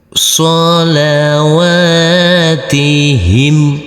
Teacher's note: Huruf waw karena di atasnya ada huruf alif kecil yang berdiri tegak lurus, maka huruf waw ini kita baca panjang dengan panjang 2 harokat